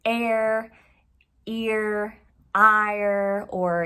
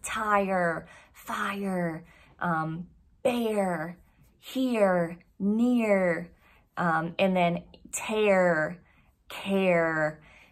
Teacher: the tongue is moving up and back, and your tongue is also flexed against the side of your teeth